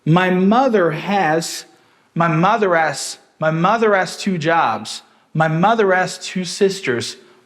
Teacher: Has, a gente já viu que em alguns casos esse H pode ser dropped.